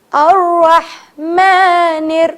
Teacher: اب را موٹا کیونکہ را پہ زبر ہے